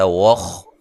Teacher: خا کو موٹا ادا کرنا ہے، ہلانا نہیں ہے